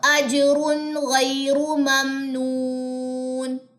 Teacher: تنوین کے بعد غین، غنہ نہیں کرنا، کیوں؟ کیونکہ یہاں پہ اظہار ہو رہا ہے، ٹھیک ہے جی؟